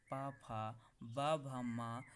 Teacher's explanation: आप जब इनको बोलते हैं तो बोलने में जो वायु निकलती है वो ओंठों के द्वारा निकलती है, इसलिए ये आपके ओष्ठ व्यंजन कहलाते हैं।